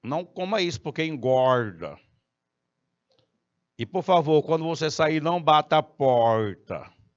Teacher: O morador lá do interior de São Paulo, ele usa aquele R retroflexo.